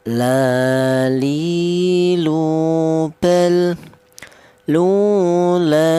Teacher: ujung lidah menyentuh langit-langit mulut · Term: huruf lam